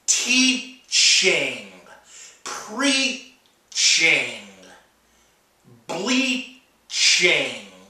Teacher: you take that part of your tongue and you make contact with the roof of your mouth to make the T, and you blend it into a sh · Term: ch sound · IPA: tʃ